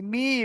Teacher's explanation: যদি না চেপে পড়ি আমি, তাহলে ভুলে মিনাল, মিনাল, মি, এই দেখেন, এই মি, মিমের নিচে জেরা, যদি চেপে না পড়ে মেনাল, মে হয়ে যাবে মে।